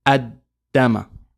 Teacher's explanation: So we get rid of the Lam and we just say, in pronunciation, Ad-Dama.